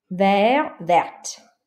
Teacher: So for example, here we have vers, but because there's so you don't pronounce this T, but because there's an E here, this is an adjective, so this is the feminine form. You don't say the E, but you say the T.